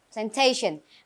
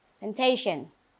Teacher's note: Remember the stress is on the second syllable.